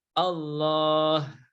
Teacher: Nah itu semuanya bacaan tafkhim ya lafadz Allahnya dibaca dengan tebal ya Kenapa karena sebelumnya berharokat fathah atau dhomah ya sebelumnya berharakat